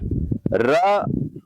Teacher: तो देखिए, र बोल करके आप देख सकते हैं, तो र को जब आप बोलेंगे तो जीभ मुंह के अंदर ऐसे कांपती है जैसे ठंड में कोई बिना कंबल के कांप रहा है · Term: प्रकंपित